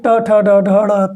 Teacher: ट ठ ड ढ ड़ में जिह्वा मूर्धा को स्पर्श कर रही है।